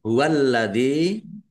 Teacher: lamnya dibaca dobel ada tasdidnya